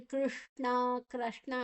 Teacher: ಎರಡು ಶಬ್ದಗಳು ಒಂದೇ ಪ್ಲೇಸ್ ಅಲ್ಲಿ ಬರ್ತದೆ ನಾಲಗೆ ಮಡಚಿ ಹೇಳೋದು